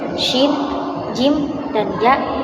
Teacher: Syajariyah yaitu huruf-huruf yang terdapat dalam lidah bagian tengah, hurufnya yaitu shin, jim, dan ya selain huruf mad.